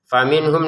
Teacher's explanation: nun sukun bertemu ha ini kan dengan jelas bacanya